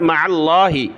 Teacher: عین کو ملایا لفظ اللہ کے ساتھ